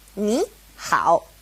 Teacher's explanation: it changes to a second tone and a third tone